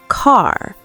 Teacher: In British English, they don't always pronounce the R at the end of words. They might say ca instead of car.